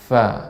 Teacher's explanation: bibir bawah mengenai ujung gigi seri atas. Fa, ya, bukan dua bibir.